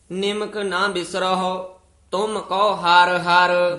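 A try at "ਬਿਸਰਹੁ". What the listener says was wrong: बिसरहो हहा नहीं है, उड़ा निमक ना बिसरहो तुम को हर हर।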